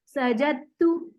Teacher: दाल नहीं पढ़ेंगे, जीम को डायरेक्ट ते से मिलाएंगे